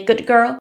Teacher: when you say good girl the D becomes more like a g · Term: assimilation